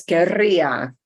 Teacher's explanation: I've got the two r's that slide together